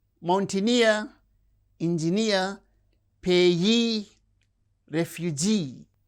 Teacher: receives stress on the suffix itself